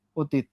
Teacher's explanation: এই অটা উচ্চারণের সময় ও হয়ে যাবে